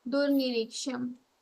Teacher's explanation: So duhu niriksham will become dur niriksham. Visarga sound will be converted to the ra sound.